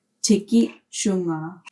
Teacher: Tikit plus tunga. The strong I palatalizes the T in tunga and changes it to CH.